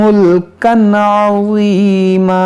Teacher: यहाँ तनवीन के बाद आइन है यहाँ पर इजहार करेंगे